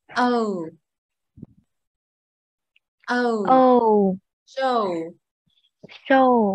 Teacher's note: Ơ thành chữ u phía sau. Nó gần giống chữ âu tiếng Việt nhưng cũng tương tự, những âm còn lại thì nó sẽ đọc dài hơn một xíu, có ù nhẹ phía sau này.